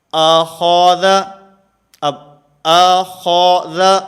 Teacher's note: حمزہ بھی باریک ہے، ذال بھی باریک ہے، اور درمیان میں خا یہ موٹا ہے ، تو ان دونوں کو باریک پڑھنا ہے اور درمیان والے